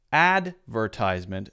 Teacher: In American English, if you say that, advertisement, the first syllable is stressed.